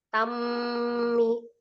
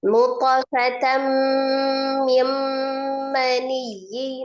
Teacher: Tanwin ketemu dengan huruf mim hukumnya adalah idgham bi ghunnah. Diidghamkan ke huruf mim disertai dengan dengung.